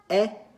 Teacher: el acento circunflex hace el mismo sonido que el acento grave, es un sonido abierto